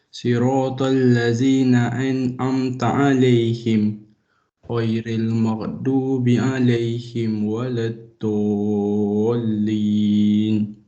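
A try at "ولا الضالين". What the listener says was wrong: Tebal lagi dot tu ya? Tebal lagi. Tu tak tebal sangat. Huruf dot ni dia kena tebal.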